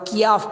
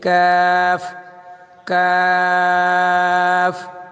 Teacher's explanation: کیف زبان کی جڑ اور تالوں کے سخت حصے سے ادا ہوگا